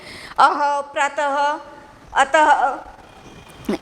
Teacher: विसर्ग में ह का उच्चारण निकलता है।